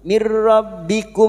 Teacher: Masuk ke huruf ro tanpa mendengung. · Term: idgam bila gunah, idgham bila gunnah